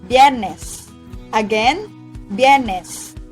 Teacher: most native speakers pronounce Viernes by omitting the sounds of letter I and just combine the sounds of B and Y